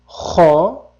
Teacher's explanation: xo deb tomog'imiz qirib o'tadi